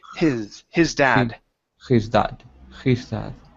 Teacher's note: remember the hes in English are very light so instead of saying his it's like a breath